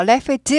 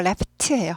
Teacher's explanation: laughed 하지 않고 laught예요. 푸가 무성음이잖아요. laugh 무성음이기 때문에 얘도 무성음 같은 무성음끼리 놀아야지 네 편하다 그랬어요.